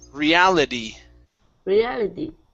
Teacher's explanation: now the T at the end, pronounce that like a D